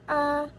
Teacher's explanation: vokal depan rendah, tak bulat, dan membuka